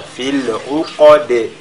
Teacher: la lettre dal de la fin qui est lue avec al-qalqala